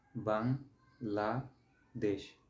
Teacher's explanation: আমি নিঃশ্বাস না থামিয়ে বাং এই শব্দটা একসাথে উচ্চারণ করছি, এইটা একটা অক্ষর। আবার লা বলে একটু থামছি, এই লা শব্দটা একবার উচ্চারণ করছি, একটু থামছি, এটা আরেকটা অক্ষর।